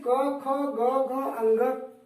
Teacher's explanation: ये क वर्ग जो है कंठ से बोला जाता है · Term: कंठ वर्ण